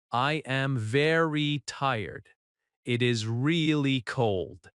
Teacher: The adverbs very and really are softer than the final adjective. Your voice goes down at the end. That falling tone shows confidence.